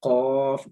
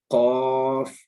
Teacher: ان دو میں یہ فرق ہے، یہ والا جو قاف ہے یہ موٹا ادا ہوگا، یہ اس کو ادا کرتے ہوئے قاف، منہ بھی گول ہوگا، ہونٹ گول شیپ میں آئیں گے، اور حلق سے ادا ہوگا قاف۔ لیکن اس کاف کو ادا کرتے ہوئے کوئی بھی آپ نے گلے کے اوپر زور نہیں ڈالنا، بالکل نارمل آپ نے اپنا فیس رکھنا ہے۔